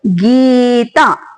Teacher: ಗೀ ಮತ್ತು ತ ಎರಡು ದೀರ್ಘ ಅಕ್ಷರಗಳಿವೆ ಹಾಗಾಗಿ ಅದನ್ನ ದೀರ್ಘವಾಗಿ ಓದಬೇಕು